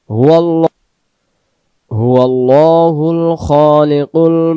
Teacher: শেষের নম্বর আয়াত, হুয়াল্লাহুল খালিকুল, হুয়াল্লাহুল, হুয়াল্লাহ, লটাকে আমরা এক আলিফ টানবো, এবং এখানেও আল্লাহ শব্দ, আল্লাহ শব্দের ডান দিকে জবর, আমরা আল্লাহ শব্দের লামটাকে ল অর্থাৎ মুখটা গোল করে পড়তে হবে।